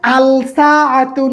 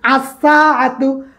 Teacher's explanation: লামের উচ্চারণ না হয়ে ওই হরফটা দুইবার উচ্চারণ হয়, ওই হরফের উপর তাসদিদ চলে আসে। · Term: হরফুস শামসিয়া